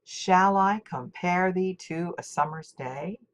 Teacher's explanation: the first metrical foot is a trochee, even though Shakespeare writes the rest of the poem in iambic meter.